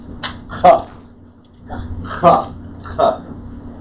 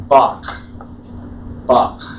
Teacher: I'm doing it a little bit harder than it needs to be done, but it is aspirated, so like a KH.